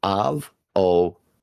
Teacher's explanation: The primary stress falls on the third syllable.